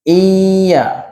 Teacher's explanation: nun mati jumpa dengan huruf ya Iya kena ada dengung